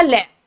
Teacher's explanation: पार्श्विक व्यंजन जीभ के पिछले हिस्से से बोला जाता है। ले को हम जीभ के पिछले हिस्से से बोलते हैं, जीभ के पिछले हिस्से से ये आपका बोला जाता है, जीभ के पिछले हिस्से से।